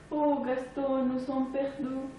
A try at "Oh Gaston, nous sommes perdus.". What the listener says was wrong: Bon, ici, de toute évidence, vous avez affaire à un U qui tend vers OU. Bon, nous allons opérer une déformation de sens opposé vers I. Vraisemblablement, il faudra opérer une déformation assez importante, puisque l'écart entre le modèle et l'erreur est effectivement assez important.